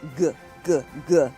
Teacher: if you add your voice to a K, it becomes GG-g.